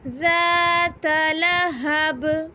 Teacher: ذال پہ ہم زبان باہر نکالیں گے کیونکہ ذال نرم حروف ہے